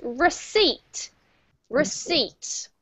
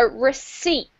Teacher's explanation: There is no P sound